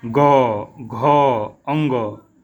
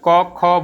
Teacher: जब ग हम बोलते हैं तो हमारी जो स्वर तंत्रियाँ हैं उनमें एक कंपन होता है। पांचवा भी जब हम इसका बोलते हैं या चौथा भी बोलते हैं, ग, घ, अंग, तो फिर आप देखेंगे, आप गले के पास अपने हाथ को रख के देखेंगे तो एक कंपन, एक वाइब्रेशन आपको महसूस होगा। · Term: घोष